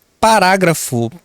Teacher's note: Antepenúltima, sílaba acentuada, portanto, a palavra é proparoxítona. Percebam que essas palavras aqui, ó, antepenúltima, essas palavras são proparoxítonas e são acentuadas.